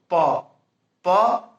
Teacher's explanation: हाँ, आप यदि देखें तो प बोलते हैं, फ ब भ म, तो प बोलते हैं तो दोनों ओठ जो है वह चिपक जाता है, सट जाता है, और सटने के क्रम में जो अंदर से आने वाली जो वायु है वह रुक जाती है, अवरुद्ध होती है।